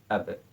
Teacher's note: Dalam melafalkan huruf ba, ketika ia disukunkan, dia memiliki bunyi pantulan ab. · Huruf ba ini huruf bibir, sumbernya pada bibir.